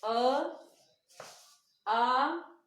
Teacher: अ से डबल जो बोलने में समय लगेगा वो आ में लगेगा।